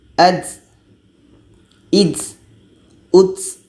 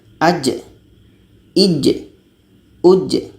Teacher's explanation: ja ini sifatnya bukan berangin, tapi kita baca secara jelas dan ada qalqalahnya